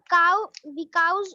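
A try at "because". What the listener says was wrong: बेटा बिकाउज, पहली बात तो बिकाउज नहीं है, कोई बिकाऊ नहीं है, सब बिकॉज है। बिकाऊ मकान होता है, जमीन होती है, ये बिकॉज है, बिकॉज।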